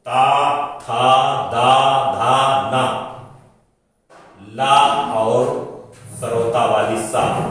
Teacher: आप जब भी इन वर्णों को बोलेंगे तो आपकी जिह्वा टकराती है दंत से, इस कारण से इन वर्णों का उच्चारण स्थान दंत कहा जाता है।